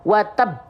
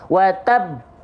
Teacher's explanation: Ada tasydid. Tahan dulu baru pantulkan, bukan pantulkan dulu baru tahan. Kalau pantulkan dulu baru tahan jadinya salah. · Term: qalqalah akbar